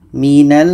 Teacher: kita dengungkan dua harakat baru matikan mimnya · Nun tasydid dengung, mim tasydid juga berdengung. Jadi kita dengungkan mim ini baru matikan.